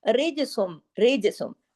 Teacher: را باریک لیکن جیم پہ کلکلا ہوگا